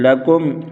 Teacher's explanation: لکم اظہار شفوی ہوگا، غنہ نہیں کریں گے